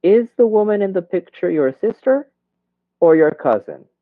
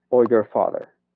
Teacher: la primera entonación o primera cláusula va a ser con entonación de subida y la última cláusula va a ser con entonación de bajada